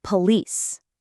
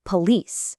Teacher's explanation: The mistake is putting all the emphasis or stress on the first syllable like this. Police.